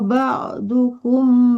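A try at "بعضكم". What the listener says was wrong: ba'da bukan ba'du ya, ba'dakum.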